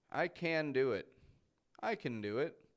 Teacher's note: I'm really linking that n to the do I can do it really stretches out I can't do it